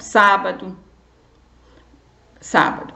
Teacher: Sábado é o sá, porque é a antepenúltima. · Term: sílaba tônica